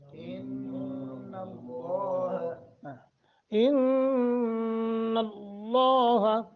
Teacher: نون مشدد غنہ کریں گے لفظ اللہ کو پر کر کے پڑھیں گے منہ بھر کے تفخیم